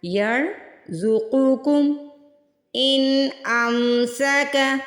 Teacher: یرزقکم ان امسک، اس کو ان نہیں پڑھنا، ان کو جلدی سے ادا کرنا ہے، نہ یہاں پہ غنہ کرنا ہے نہ ہی اخفا کرنا ہے۔